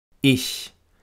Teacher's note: dass die Zähne beim Ich-Laut wesentlich näher zusammen sind als beim I-Vokal. Sie liegen allerdings nicht aufeinander. · Der Mund öffnet sich nur wenig, die Lippen sind ein bisschen breit, relativ locker. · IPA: /ç/